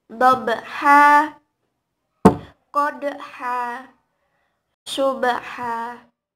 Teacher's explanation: Mad iwad yaitu apabila setiap huruf yang berharokat fathah cain ketika diwakafkan dibaca fathah dengan panjang 2 harokat